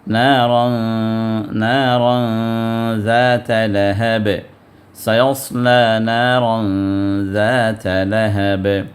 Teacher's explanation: تنوین کو ہم نے وہاں پر اخفا کیا، مطلب ناک سے